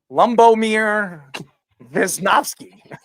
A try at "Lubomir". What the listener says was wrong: He said Lumbo. He put an M in between the U and B. Lubomir Wisnowski.